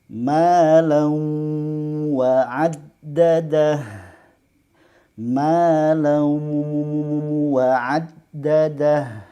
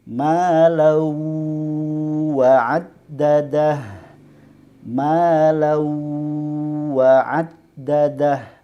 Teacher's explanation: ini cara yang kurang tepat karena secara sempurna masuk ke huruf waw tanpa ada suara dengung